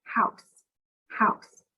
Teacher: the sound of the s is when we put our top teeth and our bottom teeth together and we let air come out and our voice box is off